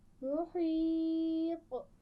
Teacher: محیط آخر میں قلقلہ تھوڑا واضح کیجیے گا